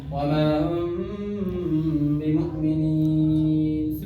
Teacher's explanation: ہاں, جب میم ساکن کے بعد با آئے گا تو اخفا ہوگا, تو ہم کو یہ اخفا کرنا ہے, میم کو تھوڑا بہت کمزور کرنا ہے, ہلکا کرنا ہے اپنے ہونٹوں کے ذریعے, ٹھیک ہے, ہونٹ سے ہوتا ہے نا, یہ کرنا ہے.